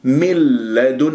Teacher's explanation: من لدنه كسرة الميم نون لام إدغام بغير غنة، راح أكل النون، ما أسمع صوت للنون أبدا. من لدن، وتصير ولو تلاحظوا أنه صارت الشدة على اللام، يعني صارت لام مشددة ما أطيل جريان الصوت فيها، أمسكها من خطأ.